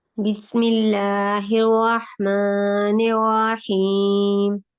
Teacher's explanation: آپ کی آواز جو ہے وہ ناک میں گئی تھی، ناک میں نہیں لے کے جانی.